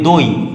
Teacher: আমরা বলতাম দহি, এখন বলি দই, তার মানে কি হটা উড়ে গেল, এই হটা উড়ে যাওয়াটাকে বলা হয় আবার আলাদাভাবে হকার লোপ।